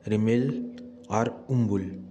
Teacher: मुंडा में माँ और ब साथ साथ उच्चारित होते हैं।